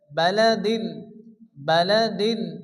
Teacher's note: এখানে হারফে খারা জবর এক আলিফ পরিমাণ টান দিয়ে পড়তে হবে